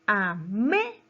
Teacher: Hay una mayor fuerza de voz en la sílaba me.